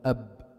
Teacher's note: انتهى الصوت انتهى باطباق شفتين فبتعرف انه مخرج الباء هو شفتات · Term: إطباق شفتين